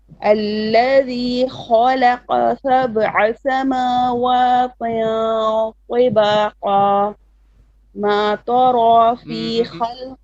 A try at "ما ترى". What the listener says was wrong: ما تا is flat.